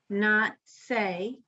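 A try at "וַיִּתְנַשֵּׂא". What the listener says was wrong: Na say. Okay, I think I'm hearing something else with it. Yeah, I heard a t. It should say na.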